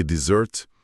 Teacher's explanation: Já desert, a sobremesa com dois Ss, empurra o acento lá pro final e o S vibra com som de Z